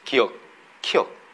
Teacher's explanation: 혀뿌리가 지금 목구멍 뒤를 한번 닫았다 열립니다